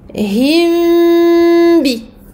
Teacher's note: Donc on va faire ici une runna longue, kamila, et on passe du mim au ba, on colle les deux lettres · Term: la dissimulation du mim